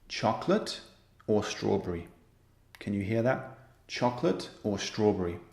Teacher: When we use or and in a list, the intonation, which is basically the music, the rhythm of the sentence, the intonation is rising and then falling.